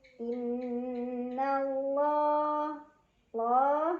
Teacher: lam jalalah dibaca secara tafkhim karena huruf sebelumnya berbaris fathah, jadi dibaca dengan tebal.